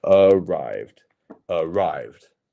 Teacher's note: our stress is on the second syllable